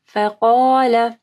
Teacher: قاف کو جو ہے ہیوی پڑھنا ہے اور باقی فا اور لام جو ہے وہ نرم حروف ہے